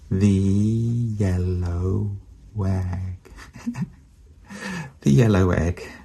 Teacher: So we're on to putting a W in between O and E. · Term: W sound